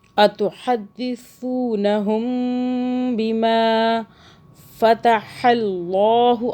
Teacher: اللہ موٹا ہو رہا ہے کیونکہ اللہ سے پہلے جو ہے زبر آ رہا ہے